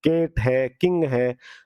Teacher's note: के की साउंड है जीभ का पिछला भाग और तालु, मतलब वॉइसलेस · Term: वेलर